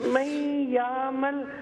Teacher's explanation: فمن يعمل میں ادغام ہے نون ساکن کے بعد یا